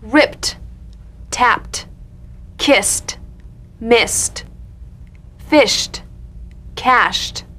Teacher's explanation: ED endings that are really pronounced as T.